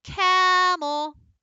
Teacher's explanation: so kam is our accented syllable that was the longest part and then e became our lazy schwa oh cam oh in